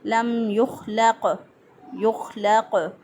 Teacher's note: یہاں پہ قاف پہ قلقلہ ہوگا، قاف جو ہے ساکن حالت میں اس پہ قلقلہ ہوتا ہے۔